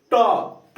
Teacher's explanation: टॉ में आपका जाके जीभ जो है आगे तालु में लड़ेगा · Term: मूर्धा का उच्चारण